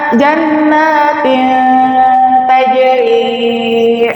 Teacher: Maka dibacanya diikhfakan dan digunahkan selama dua harakat. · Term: ikhfa akrab